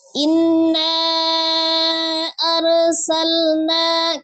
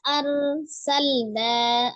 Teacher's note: ada ro sukun ya sebelumnya Fathah di huruf alif maka dibaca tebal ya rnya dibaca tebal